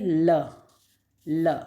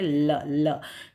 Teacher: सिर्फ आपका जो जीभ है वो ऊपर टच हो रही है और हवा जो है वो जीभ के दोनों तरफ से बाहर आ रही है, तो ल, इसलिए लेटरल का है कहलाता है।